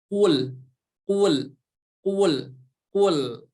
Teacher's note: Tetapi pangkal lidah yang bagian belakang, ya, lidah yang bagian belakang menempel ke langit-langit yang atas ya, ke langit-langit yang atas yang paling belakangnya. Itu untuk huruf qaf ya.